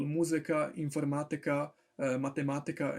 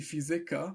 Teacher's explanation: the stress is going to fall on the third to last vowel, and not on the second to last vowel